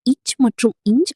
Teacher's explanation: நாவின் நடுப்பகுதி அன்னத்தின் நடுப்பகுதியை பொருத்துவதால் பிறக்கின்றன